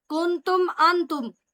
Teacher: نون ساکن کے بعد تا ہے تو یہاں پر اخفا ہوگا